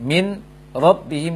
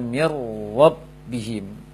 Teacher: nun sukun digabung ke dalam ro secara sempurna sehingga bunyi nunnya hilang dan dibaca ro bertasydid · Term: idgham kamil